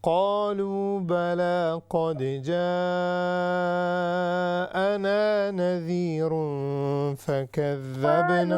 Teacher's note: We will stretch this ja for 6 seconds.